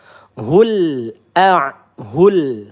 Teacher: Seperti itu. Hul lam sukun ini hurufnya sifatnya tawasud ya, dimana kita tidak boleh tertahan atau terlalu mengalir. Hul seperti itu, jangan sampai tertahan.